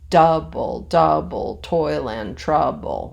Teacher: a trochee, which is another type of foot that Shakespeare uses, is the reverse. So it's da-da, long, short, or stressed, unstressed.